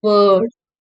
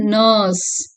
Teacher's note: Hence it is a central, mid, long, அன்ரவுண்டட் vowel.